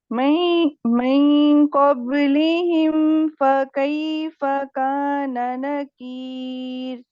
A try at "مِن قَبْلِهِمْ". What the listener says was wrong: میں نہیں ہے، میوں. میوں پہلے پڑھے می پڑھے، اب پڑھے میوں. میوں قبلہم. کسرہ کے لیے ہم کیا کرتے ہیں، ہمارے ہونٹوں کی کیفیت کیا ہوتی ہے؟ جی مجھے بتائیے گا ہمارے ہونٹوں کی کیفیت کیا ہوتی ہے کسرہ کے لیے؟